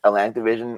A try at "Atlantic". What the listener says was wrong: Every single time you say the Atlantic, it sounds like you're about to say Atlanta.